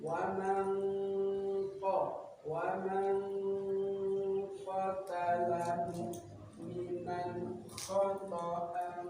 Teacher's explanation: ketika membunyikan ikhfa ini samarnya lebih banyak dari bunyi guna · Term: ikhfa abad